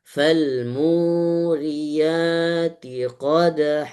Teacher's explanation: Mu dua harokat, mu-nya mad tabi'i.